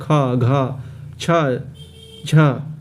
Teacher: दो और चार तो उसको महाप्राण में रखा गया है जैसे ख घ छ झ ठीक है इस तरह से इसको